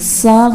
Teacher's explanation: سا غلط ہو جائے گا، اس میں سیٹی کی آواز آ جائے گی اور یہ سین کی ساؤنڈ بن جائے گی